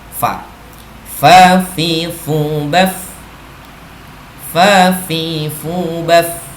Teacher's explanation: sifatnya fa yang memberi bibir bawah bagian tengah dengan ujung dua buah gigi yang atas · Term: huruf fa